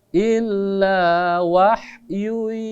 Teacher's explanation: ditekan selama 2 harokat, didengungkan karena di sana ada dhammatain bertemu dengan huruf ya. Nama hukumnya adalah idgham bi gunnah, artinya masuk dengan dengung, didengungkan, digunnahkan.